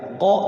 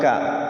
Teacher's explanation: Kalau mutaqaribain itu hurufnya berdekatan, taqaraba ya taqarabu, kayak ko sama ka, ko ka. Qaf itu di belakang, kaf di depan, ko ka. Alam nakhluqkum, jadi masuk kepada kaf.